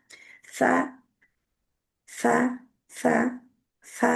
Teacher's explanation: जुबान की जो नोक है आगे से वो ऊपर वाले दो दांतों के सिरे से जाके किनारे से लगती है, नरमी से जाके टच करती है तो सा अदा होती है।